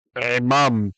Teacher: the suluk shows us that where the accent is. It's on the second syllable.